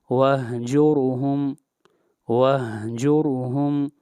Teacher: ہم نے پہلے پڑھا تھا کہ جس حرف کے اوپر ضمہ ہو اس حرف کو مضموم کہتے ہیں۔ یہاں پر را ساکن ہے اور را سے پہلے والا حرف جو ہے مضموم ہے اس لیے اس را کو موٹا پڑھیں گے، وَهْجُرْهُمْ، وَهْجُرْهُمْ، وَهْجُرْهُمْ غلط ہوگا، وَهْجُرْهُمْ۔